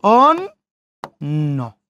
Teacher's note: শেষে নর সাথে জফলা, ওই জন্য নর উচ্চারণ 2 বার